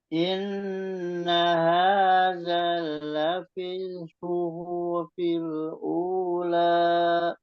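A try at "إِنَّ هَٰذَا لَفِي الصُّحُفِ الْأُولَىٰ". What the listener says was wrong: Nah, jadi di hu-nya dipercepat di situ. Inna hadza lafis suhufil ula. Suhufil ula. Jadi bukan suhufil ula, tapi suhufil ula gitu. Jadi di sini di hu nggak ada itu, mad, nggak ada mad di situ. Jadi mad itu tadi seperti yang saya bilang tadi.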